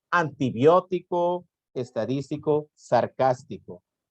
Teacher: las que llevan la sílaba tónica el antepenúltima sílaba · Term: palabras esdrújulas